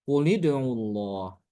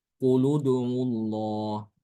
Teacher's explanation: Karena itulah ya, karena huruf yang ketiga dari fiil ini adalah doma, sehingga hamzah wasolnya harus dibaca doma, maka demikian juga ketika dia diwasolkan dengan kata sebelumnya, ya, ini bukan dengan kasroh, tapi dengan doma, ya. Jadi bacanya quludullah seperti itu.